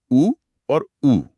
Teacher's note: होठों से होंठ गोल हो जाते हैं। इसलिए यह ओष्ठय ध्वनियां हैं।